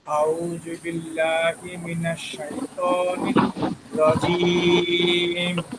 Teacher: রটা মোটা হবে, জিমটা শক্ত হবে।